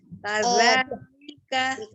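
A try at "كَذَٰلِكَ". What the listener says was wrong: Dikeluarkan sedikit ya ujung lidahnya ini za seperti itu ya. Jadi itu kalau misalnya dia jadi seperti menyerupai huruf zai gitu ya, dia agak ke dalam, Umi tidak keluarkan ujung lidahnya. Seperti itu. Ya, kaza, ya dipertahankan nih, kaza, maka jangan berubah kaza, jangan berubah, dibuka tetap mulutnya, kaza, Kadzalika, kadzalika. Seperti itu.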